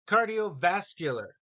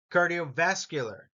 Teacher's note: Cardiovascular. Notice it's vascular is the emphasis here.